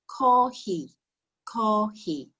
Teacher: The Japanese consonant for an F is much closer to an H. So the word for coffee sounds like this, kohi.